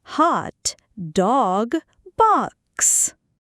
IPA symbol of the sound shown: ɒ